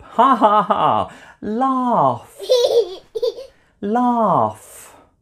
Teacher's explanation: F sound at the end even though the spelling is GH it's a sound made by air coming out of my mouth only there's no voice